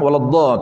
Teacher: waladhdallin tu jangan kurang daripada 4 harakat.